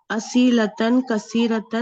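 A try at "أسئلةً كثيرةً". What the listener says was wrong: اسئلتن, ای نہیں بولا کریں, ٹھیک ہے. یہ ای نہیں ہے, یہ اسئلتن کثیرتن. یہاں پہ آپ یا بھی پڑھ جاتے ہیں نا, اسئلتن پڑھ جاتے ہیں, اس کو بھی لمبا کر دیتے ہیں.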